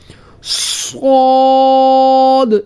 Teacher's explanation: سیٹی کی آواز بھی پیدا کریں گے اور اس کو موٹا بھی کریں گے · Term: حروف صفیریہ